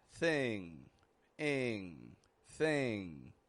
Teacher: it's just kind of a quick and fading nasal position, where the tongue pulls up in the back of the mouth